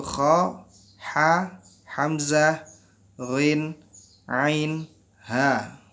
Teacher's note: yang paling banyak keluar dari sini, dari kerongkongan, dari tenggorokan kita, yaitu huruf kha, ha, hamzah, ghin, ain, ha.